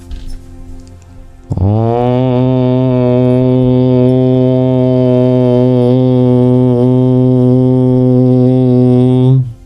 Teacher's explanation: There's no variation in sound of this. It's purely a nasalized O. It doesn't have a beginning, and it doesn't have an end or any change throughout.